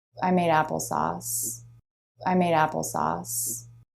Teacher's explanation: Really quick, light flap of the tongue for that D. · It's just a very quick, light flap because the D does come between two vowels here. And the D between vowels, just like the T between vowels, is a flap.